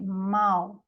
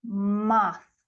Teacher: Então, por exemplo, a palavra mouth, que é boca, né, tem um ditongo aí, mouth. No Cockney, ele vai ser falado como mouth, sem o ditongo, né, como se fosse um único som de vogal.